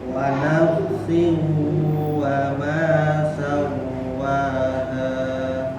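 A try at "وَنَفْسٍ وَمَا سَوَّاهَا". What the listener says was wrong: pas sawwaha ditahannya jangan terlalu lama, cukup 2 huruf, wa nafsin wa sama sawwa. Yang pertama lama nafsin wa karena dia ada gunnah, tapi yang sawwaha sedikit atau sebentar aja karena tidak ada gunnah. Wa nafsin wa ma sawwaha sawwaha.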